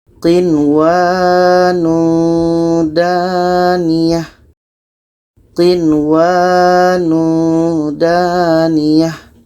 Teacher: nun mati bertemu waw dalam satu kalimah, itu izhar wajib, tidak dengung. Hukumnya izhar wajib atau izhar mutlak.